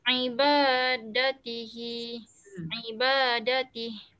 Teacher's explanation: Ain ni dari tekak dalam ya.